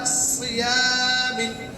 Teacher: موٹے حروف بھی ہیں اور سیٹی کے حروف بھی ہیں تو موٹا بھی پڑھیں گے اور سیٹی کی آواز آئے گی